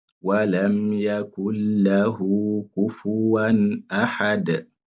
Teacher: On fait la liaison sans prononcer le nun. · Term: idgham bila ghunna